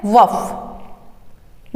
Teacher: 2 ही वर्ण इसमें आएंगे, दंतोष्ठ्य व और फ